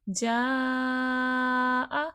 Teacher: بڑی مد ہے، 5 سے 6 الف کی مقدار کے برابر کھینچ کے پڑھا جائے گا